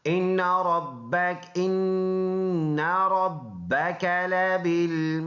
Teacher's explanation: دال میں قلقلہ کریں گے جب وقف کریں گے